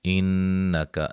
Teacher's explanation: انکا، نون مشدد پہ غنہ